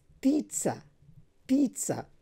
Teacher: The stress is on the first syllable, and then the sound between p and t, that is a long vowel